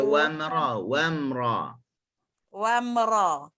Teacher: Huruf mim dia bersifat dengan tawassut. Tawassut setengah kita jumpanya dia suara antara tertahan dengan terlepas. · dia pertemuan bibir atas dengan bibir bawah, anggota huruf mim lah, dalam keadaan yang tidak kuat